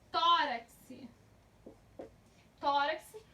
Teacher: Então, tó é a parte mais forte. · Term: paroxítona